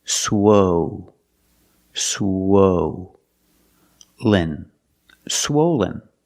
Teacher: for the first syllable use the long o like no and go